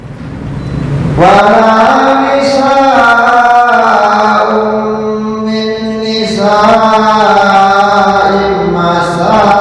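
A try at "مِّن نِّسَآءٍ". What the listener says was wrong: In, bukan im. In min nisa'in.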